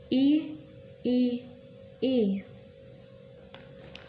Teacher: Huruf I ini yaitu cara penyebutannya depan tengah tak bundar, mulut sedikit terbuka, bibir tidak menyentuh, dan posisi ujung lidah rata dengan gigi bawah. Contohnya I.